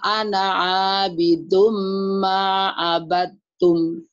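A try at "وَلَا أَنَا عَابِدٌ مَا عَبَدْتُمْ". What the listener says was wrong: Abattum, dalnya hilang ya. Abattum.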